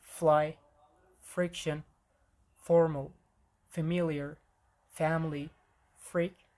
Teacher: we don't actually necessarily close our mouth completely. And this way we make a hissing sound by causing friction. We have voiceless F as in fly, friction, formal, familiar, family, freak. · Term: labio dental fricatives